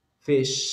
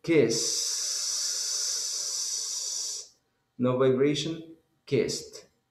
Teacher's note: the last sound that you producing when you say fish doesn't have vibration